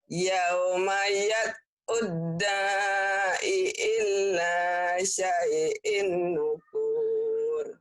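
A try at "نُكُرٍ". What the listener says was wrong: Pendek. Yauma yad'ud da'i ila syai'in nukur. Nukur. Kenapa pendek? Nggak ada madnya. Nggak ada yang manjangin. Jangan nukur. Jangan. Yang bawah baru alim. Itu ada madnya. Mad ada disukun. Ini enggak. Kosar semua. Ila syai'in nukur. Kayak orang marah. Kesel. Gitu.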